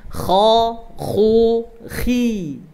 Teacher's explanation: ketika berbaris fathah dia tebal, dhammah tebal, tapi ketika kasrah dibaca tipis. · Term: huruf isti'la